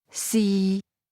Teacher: Fourth tone, mid falling